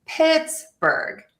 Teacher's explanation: We're going to stress syllable number 1, Pittsburgh.